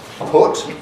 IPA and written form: pʊt (put)